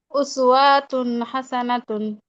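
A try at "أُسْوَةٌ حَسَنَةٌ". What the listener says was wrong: উসওয়াতে টান হচ্ছে, হরকতে কি টান হবে? উসওয়াতুন হাসানাতুন।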